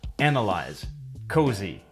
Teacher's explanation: the S is voiced in other words it makes a z sound